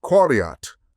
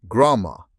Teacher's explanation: The uvular Q of Semitic becomes the velar gu of Indo-European. The R remains stable.